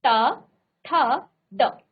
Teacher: मूर्धा पर इस तरह से मुड़कर आपका टच हो रहा है। ट, ठ, आपकी जीभ स्वतः ही मुड़ जा रही है, आप इसमें कुछ भी नहीं कर रहे हैं। लेकिन जब आप इन व्यंजनों का उच्चारण करते हैं तो आपकी जीभ स्वतः ही इस तरह से मुड़ जा रही है। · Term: मूर्धन्य